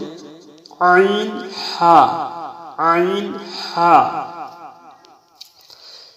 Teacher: হলকের মধ্যখান হইতে দুইটি হরফ উচ্চারিত হবে